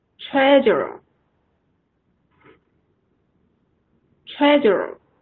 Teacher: 重音在前面第一个音节